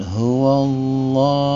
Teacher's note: Huwallah di sini ada lafaz Allah atau lam jalalah, dibaca dengan suara tafkhim atau ditebalkan, sebab lafaz Allah sebelumnya didahului harokat fathah atau baris di atas.